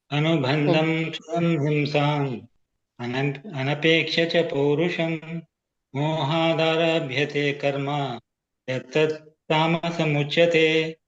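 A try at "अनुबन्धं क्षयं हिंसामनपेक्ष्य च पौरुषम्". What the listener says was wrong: ಮಹಾಪ್ರಾಣಗಳನ್ನ ಗಮನಿಸಿ ಪ್ರಭುಜಿ. ಒಂದೇ ಯಾಕಂದ್ರೆ ಉಚ್ಚಾರಣೆ ಅಂದ್ರೇನೆ ಏರುಪೇರು. ಏರೋದ್ ಯಾವಾಗ, ಎಳಿಯೋದ್ ಯಾವಾಗ, ಜಗ್ಗೋದ್ ಯಾವಾಗ, ಹ್ರಸ್ವ ದೀರ್ಘ ಇವೆ. ಅದು ಒಂದೇ ತರ ಹೇಳ್ಬಿಟ್ರೆ ಉಚ್ಚಾರಣೆ ಸ್ವಲ್ಪ ಇದಾಗತ್ತೆ ಪ್ರಭುಜಿ. ಅದನ್ನ ಗಮನಿಸಿ, ಉಳಿದಿದ್ದೆಲ್ಲ ಸರಿ ಇದೆ ನಿಮ್ದು ಕೂಡ.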